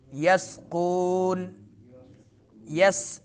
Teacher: سین میں سٹی نکالیں گے اور قاف پر پڑھیں گے